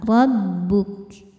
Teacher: Ro dibaca tafkhim karena berbaris fathah, maka ro-nya tebal.